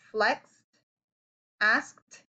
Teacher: it makes the t sound after a base word that ends with an unvoiced sound